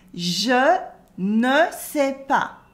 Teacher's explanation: the S at the end of pas is silent